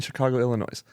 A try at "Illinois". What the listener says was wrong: don't pronounce the S in Illinois.